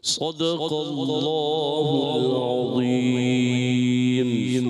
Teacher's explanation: صدق اللہ العظیم میں صاد موٹا رکھنا ہے، دال باریک قاف موٹا رکھنا ہے، اللہ پاک کا لام موٹا کرنا ہے، پھر عظیم میں ضا موٹا